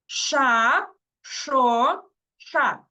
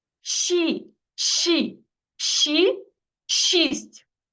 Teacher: коли ми кажемо звук ш язик В нас іде трішечки назад ближче до горла